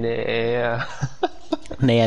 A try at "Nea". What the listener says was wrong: No, it's It's Ea because the N is silent.